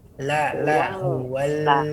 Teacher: Lanya ditempelkan kepada gusi